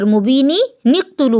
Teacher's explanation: یا تو آپ مبین پہ سانس توڑیں گی تو حمزہ کو پیش لگا کر اقتلو پڑھیں گی، یا پھر آپ اگر سانس نہیں توڑیں گی تو مبینن کا جو 2 زیر ہے اس کے ایک زیر کو نون قطنی بنائیں گی اور مبینی نقتلو پڑھیں گی.